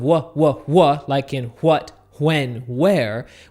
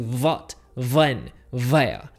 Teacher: All of our W's need to go and sound like V's.